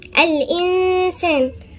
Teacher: الإنسان هنا نون ساكنة وبعدين السين، والسين مش من حروف الاستثناء يبقى نغن فيها غنة إخفاء